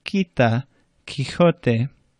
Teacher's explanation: Q is always accompanied by a U, much like English, but it sounds like a K, K, instead of KW or qua.